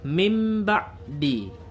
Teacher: Bunyi nun matinya berubah menjadi mim. Ini di dalam tajwid disebut iqlab, yaitu apabila nun mati atau tanwin bertemu dengan huruf ba, maka nun matinya berubah bunyinya menjadi mim.